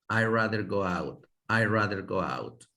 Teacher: cuando se habla casi la D ni se escucha tampoco